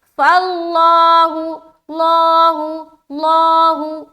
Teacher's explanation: اگر کوئی پڑھے فاللہ، فاللہ، تو لفظ اللہ باریک رہ گیا لام، تو باریک نہیں کرنا، موٹا کرنا ہے۔ جب بھی لفظ اللہ کے لام سے پہلے زبر یا پیش آ جائے لفظ اللہ کے لام کو موٹا کرنا ہے